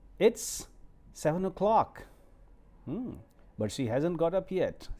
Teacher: So when you come to o'clock, then it should go on rising tone.